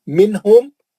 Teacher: मिनहुम एक नून साकिन का इज़हार हल्की है, एक मीम साकिन का इज़हार शफ़ी है। देख रहे ना, मिनहुम जब भी आएगा एक नून साकिन का इज़हार रहेगा, एक मीम साकिन का इज़हार रहेगा।